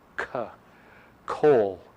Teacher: this sound is like the English K with a little puff of air after it.